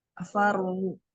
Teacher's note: Faru ada ro dibaca tafkhim karena sebelumnya bersakal fathah dan diwakafkan. Ro-nya diwakafkan ya.